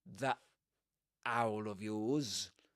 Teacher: He doesn't pronounce the t the end of that.